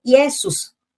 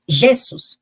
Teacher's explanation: a transformação do som vocálico para consonantal ou seja o i virou J